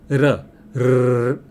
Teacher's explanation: એક જગ્યાએ 2 કે 3 વાર જીભ આમ અડે ને પાછી આવે, અડે ને પાછી આવે, એને થડકારો કહેવામાં આવે છે. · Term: થડકારવાળો ધ્વનિ